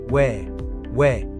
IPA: we